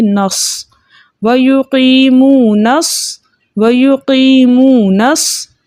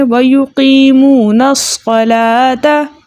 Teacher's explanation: नून का जो ज़बर है हम उस ज़बर को स्वाद, यानी जो साकिन स्वाद है उससे मिला के पढ़ेंगे